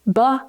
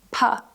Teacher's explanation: We'll start firstly with b and p. B has voice. P has no voice. It's a voiceless sound. It's created by pushing air out of your mouth.